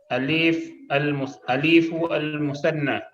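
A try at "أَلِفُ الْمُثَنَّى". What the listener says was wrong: aliful musanna. Lif jangan dipanjangkan. Aliful, bukan aliful.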